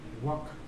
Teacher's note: Y la L pierde su pronunciación · Pero acá la A suena como una A, no suena como una E.